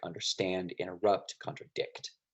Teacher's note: an anapest has the stress syllable at the end